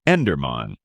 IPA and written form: ˈɛndərmæn (Enderman)